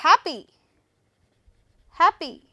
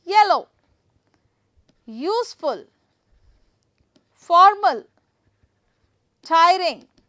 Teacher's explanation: I'm going to put the stress on first syllable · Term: first syllable stress